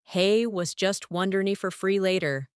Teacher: You'll know that was just wondering if you're free becomes was just wondering for free.